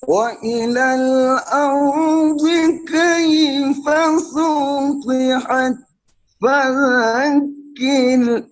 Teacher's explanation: طا کا کسرہ تھوڑا سا لمبا ہو گیا ہے، اس کے اوپر کنٹرول کریں.